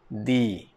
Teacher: huruf dal ingat petua dia lidah kita ke bawah sedikit. Aa letak di letak dekat gigi atas. Ah gigi atas ah belakang gigi atas eh.